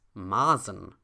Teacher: that intervocalic S becomes voiced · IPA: /ˈmaːzn̩/